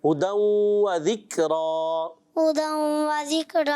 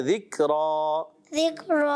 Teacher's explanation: را میں ہونٹ گول کریں گے نا تھوڑے سے